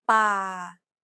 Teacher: Remember, Thai contrasts between a hard B, an unaspirated P, and an aspirated P. This example uses an unaspirated P sound like the P in spin.